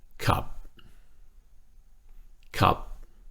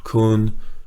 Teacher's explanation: Kop was low tone. Kun is middle tone.